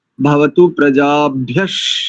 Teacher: शकार होगा विसर्ग का, यही तालव्य शकार